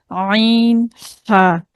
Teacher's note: वसतुल हल्क ये मखरज हल्क का दरमियानी हिस्सा है। इस मखरज से निकलने वाले हरूफ हैं आइन और हा, आइन और हा।